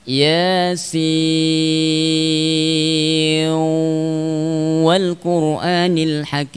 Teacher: Ketika kita membaca dengan Thariq Thayyibah maka boleh dibaca dengan idgham.